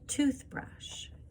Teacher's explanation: Stressing the syllables. So they'll hear like toothbrush. We emphasize the first part of that word.